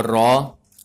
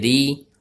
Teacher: دوستو را کے اوپر زبر آ جائے اس کو موٹا پڑھتے ہیں، اور را کے نیچے اگر زیر آ جائے تو اس کو ہم بریک پڑھیں گے